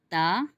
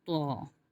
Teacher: تا اس میں باریک اور طوا موٹا ہے، کیونکہ طوا حروف مستعلیہ میں آ رہا ہے، تو طوا کی ادائیگی کے وقت زبان ہماری پیچھے سے اوپر کی طرف بھی اٹھے گی، مخرج پہ تو لگے گی لیکن پیچھے سے اوپر کی طرف بھی اٹھے گی۔